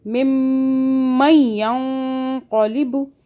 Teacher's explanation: ممن ينقلب اب دیکھیں کہاں کرنا ہے آپ نے گنہ، میم مشدد پہ کرنا ہے اور آگے اخفاء پہ، یہاں پہ اخفاء کرنا ہے نون ساکن پر